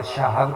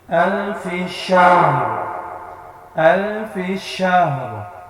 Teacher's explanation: را کو بھی ساکن کرنا ہے کیونکہ آیت کمپلیٹ ہو رہی ہے، اور ہا کو بھی ساکن کرنا ہے